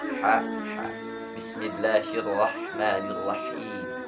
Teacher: huruf H ini mempunyai makhorijul huruf dari tengah tenggorokan